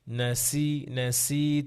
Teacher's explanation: সিন এবং সদ এটা আরেকটু তীখন হবে আরেকটু সফি আদায় করতে হবে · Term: সফির